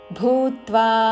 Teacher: మహాప్రాణక్షము భూ దాని మీద ఆఘాత